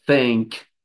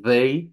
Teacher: é um s abafado pela língua no primeiro e o outro um z abafada pela língua sem mordida pela